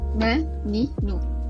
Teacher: huruf nun ni aa dia belakang sikit daripada huruf lam